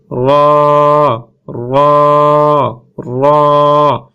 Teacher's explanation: জিহ্বার আগা মাড়ির আগার সাথে লাগবে, মাড়ির যে গোড়া আছে গোড়ার সাথে লাগবে, গোড়ার সাথে লেগে উচ্চারণ হবে র, র, র।